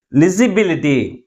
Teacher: అంటే third syllable ని మిగిలిన సిలబుల్స్ కంటే ఎక్కువ ఫోర్స్ గా పలుకుతున్నాం కాబట్టి ఈ పదము ITY అనే సఫిక్స్ తో ఎండ్ అయింది కాబట్టి ప్రైమరీ స్ట్రెస్ ని లాస్ట్ నుంచి మూడవ సిలబుల్ ముందు ఉంచాలి.